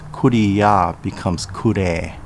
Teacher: The I sound followed by a ya becomes the long E sound.